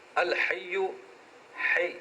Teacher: دیکھیں زبر ہے ہاں پر. الحی, حی ہا وسط حلق سے نکالیں